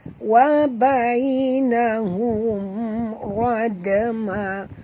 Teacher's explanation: mim mati bertemu ra, tak boleh dengung ya, izhar syafawi lagi